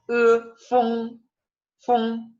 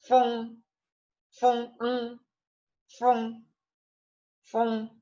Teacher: Es un sonido peculiar. Es como la E, pero nasalizada.